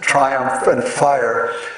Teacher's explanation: And then particularly with regard to the second half of the line, he explains this exaltation and exaltation is brought about by the two long and highly stressed vowels in the first syllable of triumph and in the word fire. There are two long I's, so there's an assonance also of long I's, triumph and fire.